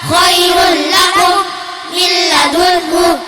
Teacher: nun sukun atau tanwin bertemu salah satu huruf yang 2, yaitu lamun, raun, dan cara bacanya diidghamkan tanpa dengung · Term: Idgham bila gunnah